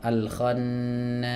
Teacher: Ini mat arid disukun, panjangnya boleh 2, boleh 4, boleh 6.